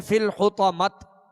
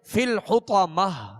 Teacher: گول تا کو وقف میں ہائے ساکنہ سے بدلیں گے